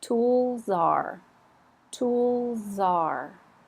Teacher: The next one, if we say tools, tools, if we put the verb are with it, tool, zar, that little soft Z jumps over onto the verb are